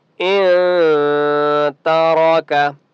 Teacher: नून के ऊपर सुकून है, यहाँ पर इख्फा होगा क्योंकि आगे ता है। ता जो है वो हरूफ इख्फा में से है, जो 15 हरूफ हैं उनमें ता है, तो यहाँ पर इख्फा होगा।